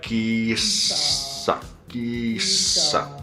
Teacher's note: We just have to prolong the S because it's double S.